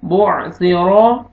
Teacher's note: बो सी, सीन में आपका आवाज नहीं मिक्स होना चाहिए, ये सा है। बो सी, रॉ को मर जबर है, रॉ को मोटा करके पढ़ेंगे